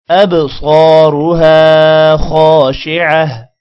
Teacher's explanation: با پر قلقلہ ہوگا، صاد موٹا ہوگا